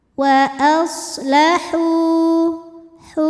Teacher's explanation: ada suara desisan seperti Suara angsa untuk huruf Shad